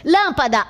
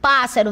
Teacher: Porque a sílaba tônica é a antipenúltima. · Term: proparoxítona